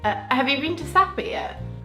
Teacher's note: English people tend to have a quick rise and then a little fall.